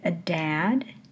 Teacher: we have the noise spike silent period the noise spike and we get into the vowel pretty quickly